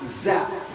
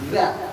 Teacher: bukan z a za tapi ada d-nya di depannya